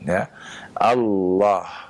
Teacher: dengan lam yang ditebalkan